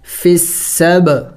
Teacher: آگے با ساکن ہے چونکہ حروف قلقلہ میں سے ہے اور ساکن بھی ہے تو قلقلہ کریں گے یعنی ہلا کے پڑھیں گے